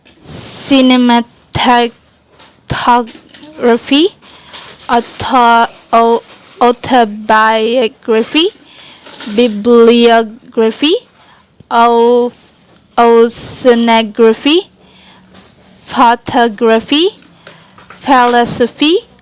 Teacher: In these rules, when pronounced the word ending with this ending, so then the stress placed on the third to last syllable